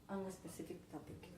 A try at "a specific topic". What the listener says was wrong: A specific topic. Because you're adding an e before it, so for you it's an an. A specific topic.